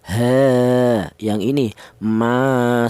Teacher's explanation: Berhubung ada alifnya mad thobi'i, maka dipanjangkan yaitu panjangnya satu alif. Satu alif itu sama dengan dua harakat atau dua ketukan.